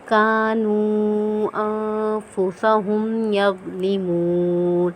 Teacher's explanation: رفع مدہ کے بعد حرف حمزہ آ رہا ہے تو نون کے اوپر ہم یہاں پہ مد کریں گے، چھوٹی مد ہوگی